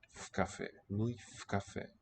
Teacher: Мы, I am in the cafe, not the coffee. So, v preposition in with the following k, which is voiceless. It'll sound as a f.